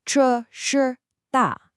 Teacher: You have to make sure each one has that distinct falling tone.